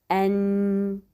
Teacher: un son qui sort de la cavité nasale, c'est-à-dire al-ghunna, appelé en français le nasillement · Donc, ça sort de deux parties, langue et nez.